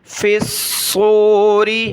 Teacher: صاد کو موٹا پڑھنا ہے اور تشدید کی وجہ سے جما کر سختی کے ساتھ پڑھنا ہے